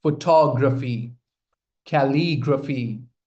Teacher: pronounce these words with stress on the second syllable.